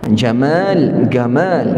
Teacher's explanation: orang-orang di Mesir dia tak boleh sebut ja, dia sebut ga.